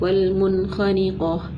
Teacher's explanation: ٹھیک ہے, صرف ہم نے کیا کیا, نون کا اظہار کیا کیونکہ نون ساکن کے بعد حروف حلقی میں سے خا آ رہی تھی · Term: اظہار حلقی